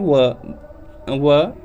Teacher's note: दंत और ओष्ठ से व आपका बोला जाता है। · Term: दंतोष्ठ